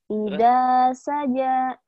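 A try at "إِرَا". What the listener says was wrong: Ida, ira. Ira, ira. Ira. Ira, lidahnya kayak digigit. Ira saja ya. Ira saja.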